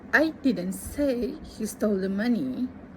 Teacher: This sentence emphasizing he means someone else stole it.